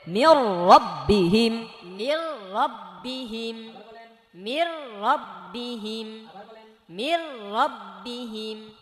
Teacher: মির, এই যে নুন পড়ে যাবে, সরাসরি রকে ধরবে, মির মির। রের মধ্যে যেহেতু জবর, সো রটা মোটা করে পড়তে হবে